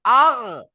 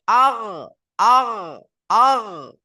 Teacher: তো হামজা গাইন জবর আগ, হামজা গাইন জবর আগ, দেখেন একটা খুশকি একটা আওয়াজ আসবে, খুশকি আওয়াজ, আগ খড়খড়ে আওয়াজ একটা আসবে